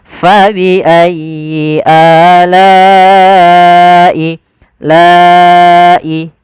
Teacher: Maka la-nya awalnya 2 harokat karena bertemu hamzah, maka dia wajib kita panjangkan untuk riwayat Imam Hafiz an Asim dari jalur Imam Syatibi, yaitu sepanjang 4 atau 5 harokat. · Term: mad wajib muttasil